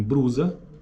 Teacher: presença de R em lugar de L em grupos consonantais